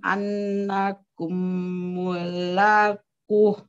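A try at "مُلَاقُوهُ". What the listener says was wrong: Panjang Bu, mulakuh.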